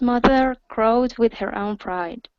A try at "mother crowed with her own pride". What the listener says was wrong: Good. Good. Nice job.